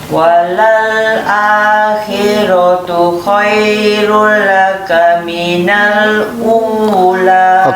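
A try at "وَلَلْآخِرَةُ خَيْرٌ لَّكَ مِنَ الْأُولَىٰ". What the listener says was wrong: Okey, kha itu nyatakan hurufnya, ya.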